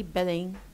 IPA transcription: berɪŋ